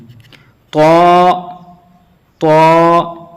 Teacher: طا، طا، دال، تا، یہ کہ تا تھوڑا باریک، تا، دال تھوڑا سے بھاری ہو جائے گا، دال، طا، طا جو ہوگا وہ منہ بھر کے آئے گا، پورا موٹا پڑا جائے گا، پور پڑا جائے گا، طا۔